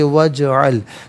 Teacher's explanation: و اجعل، واو پر زبر ہے، اسے اجعل کی جیم ساکن کے ساتھ ملائیں گے، درمیان میں سے الف یعنی حمزہ کو حذف کیا جائے گا، اسے ہم پڑھیں گے وجعل۔ جیم ساکن ہے لیکن حرف قلقلہ ہے تو آواز لوٹتی ہوئی محسوس ہونی چاہیے۔